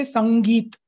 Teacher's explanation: the sound that I'm making between sa and gi is the ng sound